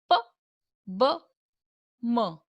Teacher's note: The sounds are articulated with the upper and the lower lips. Such sounds are called bilabial sounds.